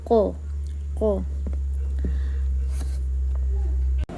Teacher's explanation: Huruf qaf juga termasuk di dalam al-lisan, pangkal lidah paling belakang menempel ke langit-langit lunak